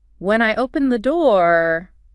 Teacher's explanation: Your voice goes up, holds, and the listener expects more. If you said, when I opened the door, falling, it sounds like that's the end of the story.